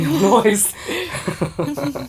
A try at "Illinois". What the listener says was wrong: The S is silent. Illinois.